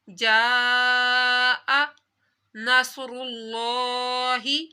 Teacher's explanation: صاد حروف مستعلیہ ہے، اس کو موٹا پڑھنا ہے، سیٹی بھی نکالنی ہے، اور لفظ اللہ سے پہلے پیش ہے تو لفظ اللہ کو موٹا پڑھنا ہے۔